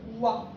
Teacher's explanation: 와 발음하려면 처음에는 우였다가 그다음 끝은 아가 돼야 되잖아. 우와. 입의 모양을 안 바꾸면 발음을 할 수가 없어. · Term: 이중 모음, 이중모음